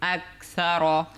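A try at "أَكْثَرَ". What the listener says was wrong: র, র মোটা হবে। কেন মোটা হবে, র এর উপর জবর আছে, আবার র সাকিন ডান দিকে জবর হলেও কিন্তু মোটা।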